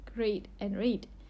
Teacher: A tends to have less diphthongal movement in Singapore English than in many other varieties of English, as in words such as great and rate.